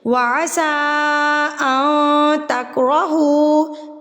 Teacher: مد منفصل چھوٹی مد جس کو ہم نے 3 حرکات کے برابر کھینچنا ہوتا ہے، اور اس کی پہچان ہمیں اس حمزہ سے ہوتی ہے.